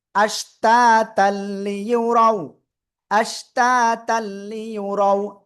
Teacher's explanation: হামজা শিন জবর আশ, তালিব জবর তা, তালাম দুই জবর তাল, আশ তা তাল, লাম জাল্লি ইয়া পেশ ইউ লিউ, র ওয়াও জবর রাও, লিউ রাও। তানবিনের পরে ঈদগামে বেলা গুন্নার অক্ষর লাম আসছে, আমরা কি করব? গুন্না ছাড়া আমরা মিলিয়ে পড়বো।